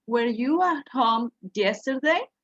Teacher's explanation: when we have a question and the answer is yes or no, the intonation of the question raised.